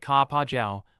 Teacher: with emphasis on the middle syllable. You'll hear this in presidential addresses or formal declarations, similar to saying one instead of I in formal English. · Sounds like ka pa jiao, with emphasis on the middle syllable.